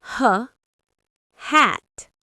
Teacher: Notice how h for hat is just air, no vibration. It's a soft sound.